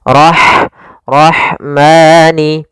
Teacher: ada huruf ha yang memiliki sifat hames yaitu harus ada jaryanun nafas harus ada mengalirnya nafas kita